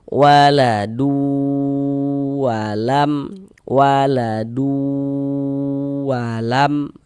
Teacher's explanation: Jadi di bagian duya itu suaranya itu kita tahan, kita panjangkan sebentar ya. Kira-kira sepanjang dua harakat. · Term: ghunah